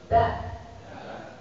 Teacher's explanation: Da itu lidah di akar gigi atas. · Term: huruf dal